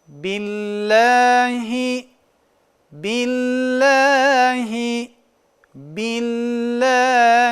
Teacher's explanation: Allah lafzından önceki harfimiz harekesi kesra Yani bu harfi kesra olması Allah lafzının lamın bizim ince okumamız gerektiğini ifade ediyor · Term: lam ince okunur